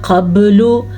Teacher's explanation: क़ब्लु बा के ऊपर कलकला हो रहा है